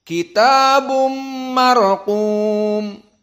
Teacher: Jadi kitabum idgham bi gunnah. Maksudnya tanwin dimasukkan kepada mim, inilah idgham. Dan bi gunnahnya bumma.